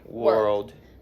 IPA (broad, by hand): wɜːld